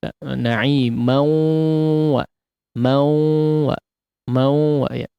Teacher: jangan cuman mau mulutnya saja yang keluar suara ya, tapi ada aliran juga dari hidungnya. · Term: gunnah